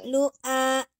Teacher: Tertahannya suara. Jadi hamzah nafasnya tertahan, suaranya juga tertahan. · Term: zidah